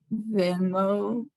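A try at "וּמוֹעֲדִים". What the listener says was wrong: Not vi. It's the vowel when it's in the front.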